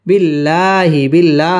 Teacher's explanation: আল্লাহ শব্দের লামটা বারিক হবে